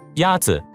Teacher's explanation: the first tone is a high level tone